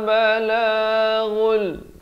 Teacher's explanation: Asalnya balaghun, tapi datang lam masuk tanpa dengung, jadi idgham bila gunnah.